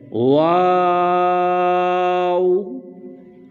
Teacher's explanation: اس حروف کو حروف مدہ بھی کہا جاتا ہے۔ واو، اس کا جو مخرج ہے یہ حروف مدہ ہے، جوف دہن یعنی منہ کا خلا